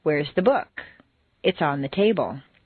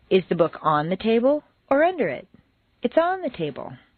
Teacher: The first is stressed on the most common everyday word, book. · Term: Normal intonation